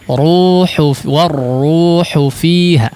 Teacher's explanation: Hu-nya pendek tapi ra-nya jangan ikut pendek ya.